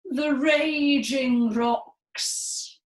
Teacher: consonant hammer at every syllable but we're going to do it in our tragic voices so perhaps up in the register and legato smooth sort of tone